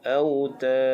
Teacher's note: Tad bila waqaf menjadi mad aril li sukun, dibaca dengan 2, 4 atau 6, dan akhir dengan qalqalah kubra.